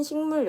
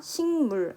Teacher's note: 기역이 비음 뒤에 있는 이 미음의 영향을 받아서 다시 이응으로 발음이 나고 있다는 것입니다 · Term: 비음화